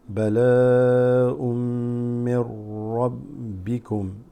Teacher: This noon sakina drops, mixing with the ra here.